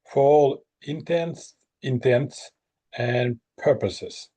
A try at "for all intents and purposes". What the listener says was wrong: Yes. That's how you say it.